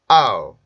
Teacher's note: 아우 이렇게 뚝뚝 끊지 마시고 아우 발음에서 입술 옮겨서 우 발음으로 옮겨가면서 소리를 만들어 주시면 돼요. 그래서 아우 이렇게 발음을 합니다. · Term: 이중모음